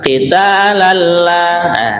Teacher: Tanwin ketemu dengan lam, namanya idgham bila gunna. Ini seakan-akan tanwinnya sudah tidak ada, langsung berbunyi lam yang bertasydid ya.